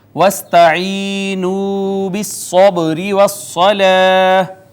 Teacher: با حروف کلکلہ میں سے کلکلہ ہوا، چھوٹا کلکلہ ہوگا چونکہ حرف کلکلہ درمیان میں ہے